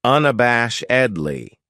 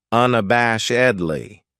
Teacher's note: this adverb has five syllables and the stress is on the third syllable unab bash edley that second syllable has that schwas sound unabashedly